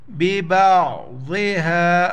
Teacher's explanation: عین کو گلے سے کریں گے